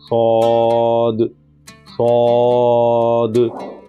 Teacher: اس کا جو مخرج ہے وہ زبان کی نوک اور اندرونی دانتوں کے کناروں سے ادا ہوتا ہے یہ حرف، اور ہم اس کو صاد نہیں پڑھیں گے، صاد نہیں پڑھیں گے، بلکہ اس کو پر کر کے موٹا کر کے پڑھیں گے، صاد، صاد، موٹا کر کے پر کر کے پڑھیں گے اس کو تاکہ اچھے سے ادا ہو جائے۔